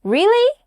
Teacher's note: Your voice goes up, right? That rising tone shows you are asking a question.